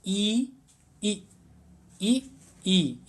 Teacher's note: तालव्य का मतलब होता है तालु से। ई ई ई ई इनका उच्चारण करके देखते हैं कि जो जिह्वा है वो तालु में जाकर के टकराती है